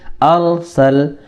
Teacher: را ساکن سے پہلے زبر ہے تو اس را کو پور کریں گے، یعنی آواز بھاری ہوگی